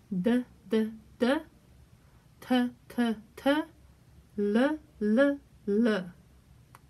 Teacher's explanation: all the d's t's and l's are in the front of the mouth and you use your tongue at the very roof of your mouth